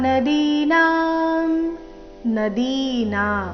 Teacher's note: ದಿ ಮತ್ತೆ ನ ಎರಡು ದೀರ್ಘ